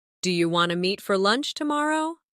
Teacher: In casual speech, do you want to often sounds like do you wanna.